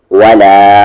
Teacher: مد ہے کھینچیں گے 3 سے 4 حرکت کے ایکول